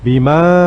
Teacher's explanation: Kata ma pada ayat ini kita panjangkan, panjang sampai dengan 6 karena ini mad jaiz munfasil.